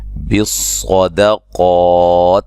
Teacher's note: صاد کو موٹا، قاف کو موٹا، درمیان میں دال ہے، اس کو باریک کرنا ہے